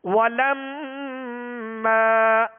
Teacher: ثم ولما میم مشدد میں غنہ کریں گے اور میم کے آگے الف مدہ ہے, الف سے پہلے زبر ہے لہذا الف کو ایک الف کی مقدار میں کھینچ رہے ہیں